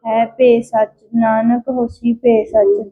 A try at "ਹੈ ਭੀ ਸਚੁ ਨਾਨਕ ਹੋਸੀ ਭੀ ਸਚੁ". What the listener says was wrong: ਇੱਥੇ ਸਿਰਫ ਸਿਹਾਰੀ ਦਾ ਫਰਕ ਹੈ। ਠੀਕ ਹ ਨਾ ਭਬੇ ਨੂੰ ਸਿਹਾਰੀ ਹ ਉੱਥੇ ਬਿਆਰੀ ਹ।